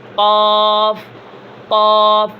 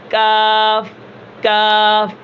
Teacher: یہاں پر دیکھیں یہ جو تالو ہے یہ نرم ہے اوپر والا, یہ جو سخت تالو ہے نا یہاں سے کاف ادا ہوتا ہے, باریک کاف, اور یہ قاف موٹا ہے اور یہ کاف باریک ہے